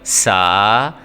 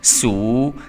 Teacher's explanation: سین کو جب بھی آپ نے پڑھنا ہے تو آپ کی سیٹی کی آواز آنی چاہیے